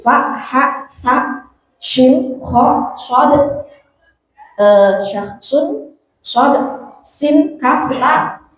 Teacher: hamas itu ada aliran desisan, aliran angin, ada angin yang keluar